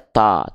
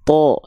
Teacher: Ketika dia berharokat fathah dia tidak dibaca ta, tapi dia dibaca dengan vokal O, to. Kenapa? Karena dia termasuk ke dalam huruf yang pelafalannya harus dibaca dengan keadaan yang tebal. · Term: huruf yang besar